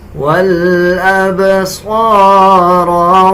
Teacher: صاد کو پر یعنی موٹا پڑھیں گے، را کو بھی موٹا پڑھا جائے گا